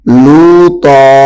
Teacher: لوطا نہیں پڑھنا، باریک نہیں کرنا، بلکہ طا کو موٹا کرنا ہے